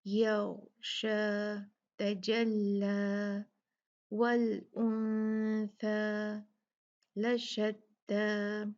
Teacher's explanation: یہ سب جو ہیں یہ ختم ہوں گی 2 کاؤنٹ کھینچنے سے الف کو